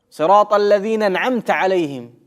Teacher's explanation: Некоторые в слове «анаамта» пропускают хамзу. И получается, صراط الذين أنعمت عليهم.